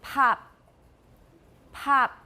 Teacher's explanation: The first one has aspiration, that puff of air.